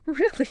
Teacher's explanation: you've got that elongated high tone that signals real surprise. The one with the extended vowel sound.